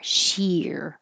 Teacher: Sheer almost ear. Because your tongue's very high for she and then it comes down and slides back for the R.